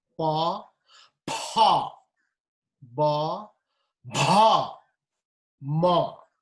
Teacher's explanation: Non-aspirated, aspirated, non-aspirated, aspirated, and nasal.